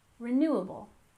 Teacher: First off, we have renewable energy. We stress the second syllable in renewable, renewable.